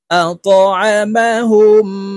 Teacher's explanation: আত আত আইন জবর আ মিম জবর মা আত আমা হা মিম পেশ হুম। এই হা তাসদিদওয়ালা মিমের সাথে গুন্নার সহিত পড়তে হবে, মাঝখানে জজমওয়ালা মিম বাদ পড়ে যাবে। হা মিম পেশ হুম আতাআমাহুম।